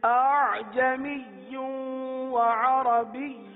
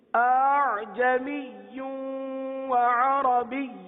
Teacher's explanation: تیسری ادائیگی جس میں دونوں حمزہ ہے لیکن پہلا حمزہ واضح ہے، تحقیق کے ساتھ ہے، دوسرا حمزہ نرمی کے ساتھ ہے